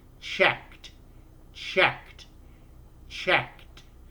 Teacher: The k sound doesn't make a buzz in your vocal cords, so you end it with a t. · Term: unvoiced